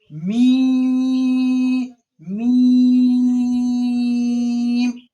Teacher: اب کیا ہے؟ میم، یہ دونوں ہونٹوں کے خشک، یعنی کہ دونوں ہونٹوں کے جو یہ سوکھا والا خشک والا حصہ ہوتا ہے وہاں سے ادا ہوتا ہے۔ میم، یہ بھی حروف مدات میں سے، لہٰذا اس کو بھی 5 انگلی کھینچ کے پڑھیں گے۔